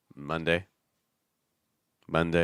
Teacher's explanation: I want you to notice the schwa sound on mun. So it's not ma ma, it's more ma ma.